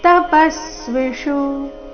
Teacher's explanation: ಪ ಮೇಲೆ ಆಘಾತ, ಕೊನೆಯ ಶು ರಸ್ವ.